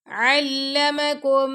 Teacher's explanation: ऐन जो है आपके गले के दरमियान से उसकी आवाज आनी चाहिए